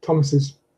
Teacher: And that's the reason why we have to add an extra syllable. We add a vowel between the S of Thomas and the apostrophe S